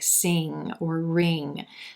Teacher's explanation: sound and the ing sound as in like sing or ring the back of the tongue coming up toward the velum touching and connecting with the velum and staying up there you don't want it to drop back